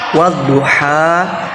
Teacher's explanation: Jadi lam di sana tidak dibaca jelas atau ditiadakan. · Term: alif lam syamsiyah